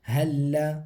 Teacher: لام کے اوپر جو ہے آ رہی ہے تشدید، تو لام کو پڑھیں گے دو بار، ایک پچھلے حرف یعنی ہا کے ساتھ، ایک آگے خود لام کو